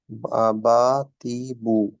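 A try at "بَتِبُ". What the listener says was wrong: না বুতে টান হয় নাই বাতি বু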